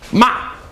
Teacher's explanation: your voice goes down sharply